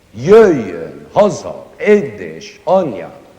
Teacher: Almost all the words in it are accented on the first syllable.